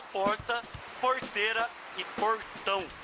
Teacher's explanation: é o tipo do R retroflexo meio com a língua para trás